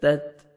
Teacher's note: ता को ता के साथ मिलाएंगे, डबल साउंड नहीं आएगा